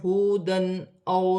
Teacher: دو زبر کی تنوین میں غنہ نہیں ہوگا کیونکہ آگے حمزہ آ رہی ہے ، حمزہ حروف حلقی میں سے ہے، واو ساکن سے پہلے